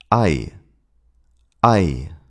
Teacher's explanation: It starts with an A sound, as in father, and then glides into an E sound, as in bit, but very fast. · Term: i defth thong, I diphthong